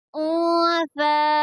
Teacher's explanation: اب دیکھیں یہاں پر ہو رہا ہے اخفا، کیونکہ نون ساکن کے بعد میں فا آیا ہے اخفا کے حرفوں میں سے، اس لیے یہاں پر اخفا ہوگا اور نون کی آواز کو چھپا کر پڑھیں گے